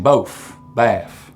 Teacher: you also get f for final th sounds here as in both, bath.